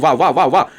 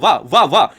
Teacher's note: जब वाह बोलोगे तो दांत ओठ में टच हो रहा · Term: दंत उष्ट